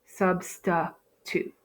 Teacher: In my second syllable, I end with an I. So in a typical open syllable, this would be a long I sound, but here it's not. We have a schwa